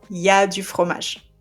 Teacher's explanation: we skip the il completely and it becomes ya. For example, if you want to say il y a du fromage, there is cheese, we say y a du fromage.